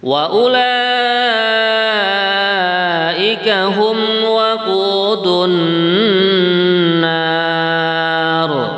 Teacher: Adapun kalimat ulaika, ini kalau ini namanya mad wajib muttasil ya. Karena hamzahnya dalam satu kalimat ini sama, kita panjangkan 4 harokat ya